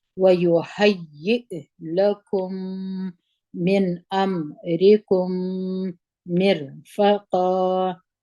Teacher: میم په زیر سره جنګ وو مر فامو په زور ول قاف باندې دوه زور دي چې درېږي موږ په یو زور یو الف باندې وایو مد عوض جوړوو